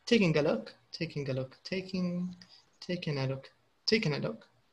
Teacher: The N is a little stronger than the G.